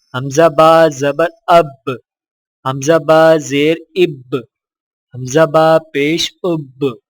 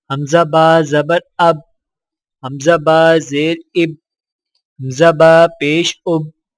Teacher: حرف با پر جزم آئے تو دونوں ہونٹ آپس میں مل کر الگ ہو جاتے ہیں اور قلقلہ ہوتا ہے